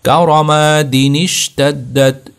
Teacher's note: دی کے فوراً بعد آپ نے نون زیر کو آپ نے شین کے ساتھ ملانا ہے